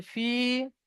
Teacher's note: ফা ইয়াজের ফি এখানে একালি পরিমাণ টান হবে, বাকি কোথাও টান হবে না